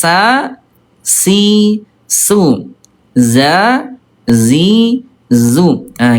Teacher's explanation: Turun pangkal lidahnya semuanya tipis.